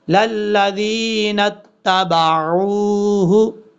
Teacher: عین کو کلیئر کرنا ہے، حمزہ کی آواز نہیں آنی چاہیے